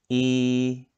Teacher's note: You can notice that the jaws are really close, okay, and it's at the beginning, it's at the front of the mouth.